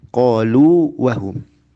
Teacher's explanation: Jadi kalau wawu mad menghadapi huruf wawu lagi, dia hukumnya izhar, jelas.